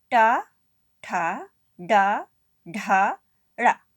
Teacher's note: इनका उच्चारण करते समय जीभ हमारी मुड़ जाती है, जिसके कारण इन्हें मूर्धन्य वर्ण कहा जाता है।